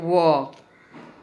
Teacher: इनका उच्चारण निचले होठों के साथ दांतों के मिलने से होता है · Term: दंतोष्ठ